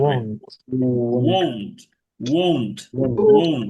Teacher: ও দিয়ে শুরু না, শুরুটা হবে উ দিয়ে।